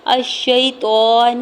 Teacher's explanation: شین حروف شمسی میں سے ہے، یا ساکن سے پہلے شین کے اوپر زبر ہے یا لین ہو رہا ہے، یعنی یا ساکن سے پہلے کسی بھی حرف کے اوپر زبر ہو تو یا لین ہوتا ہے، نرمی سے موڑتے ہوئے ادا کریں گے۔ تو کے اوپر کھڑی زبر کو دو حرکت کے برابر کھینچ کے ادا کریں گے۔ نون کی پیش کو بغیر کھینچے ہوئے ادا کرنا ہے۔